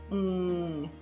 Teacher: The /ŋ/ is created when the soft palate or velum and the back of the tongue come together way in the back of the mouth.